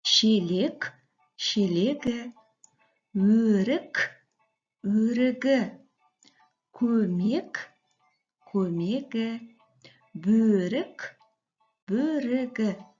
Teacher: Әрине, мұндағы К дыбысы мұнда Г болып өзгеріске ұшырады. Яғни К дыбысынан кейін дауысты дыбыс келетін болса, ол балалар бізде Г болып өзгеріске ұшырайды екен.